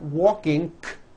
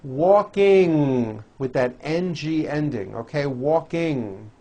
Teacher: It's a combination of an N and a G, and it is found at the ends of words like ring and sing. And I want you to realize that there is not a K sound.